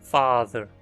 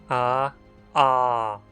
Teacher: Ela não é como A do português, mas é pronunciada mais para o fundo da boca, como A no inglês father. Para chegar até ela, pronuncie o nosso A e tente levar a língua mais para o fundo da boca.